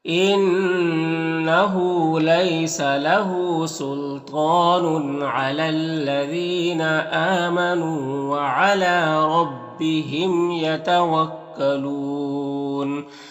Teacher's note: میم میں اظہار شفوی ہوگا · یہاں پر تنوین کے بعد عین حروف حلقی میں سے تو تنوین میں اظہار حقیقی ہوگا